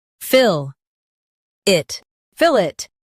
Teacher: Keep fill strong and it light.